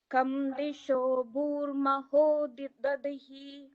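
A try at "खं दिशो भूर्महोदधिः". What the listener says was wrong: So the kham has to be the Mahaprana kham. Kham disho bhurmahodadhihi.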